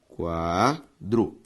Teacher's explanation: A sílaba tônica de quadro, quá.